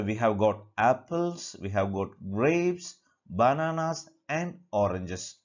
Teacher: The last alone will have the falling intonation.